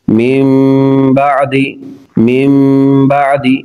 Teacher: نون ساکن اور تنوین کو میم سے بدل کر اخفا کریں گے، یعنی غنہ کریں گے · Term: اقلاب